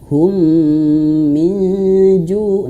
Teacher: Hum, dan alat bantu visualnya di sini double. Double artinya dia ditahan 2 harokat. Idgham ditahan 2 harokat.